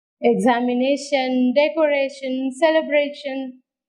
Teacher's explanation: take stress on the penultimate syllable